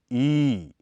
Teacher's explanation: इसके उच्चारण में जीभ का अगला हिस्सा बहुत अधिक ऊपर उठ जाता है। साथ ही इसके उच्चारण के समय होंठ चौड़ाई में खुल जाते हैं तथा किनारों की तरफ कुछ खिंच भी जाते हैं।